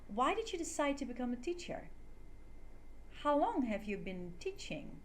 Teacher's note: WH questions end with a falling intonation. Your voice gets lower at the end of the question.